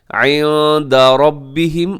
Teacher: عِنْدَ یہاں نون ساکن ہے اور نون ساکن کے بعد دال ہے، تو اب یہاں پہ اخفا کریں گے عِنْدَ رَبِّهِمْ، اور ربِّهِمْ میں را موٹا پڑا جائے گا کیونکہ را کے اوپر حرکت ہے۔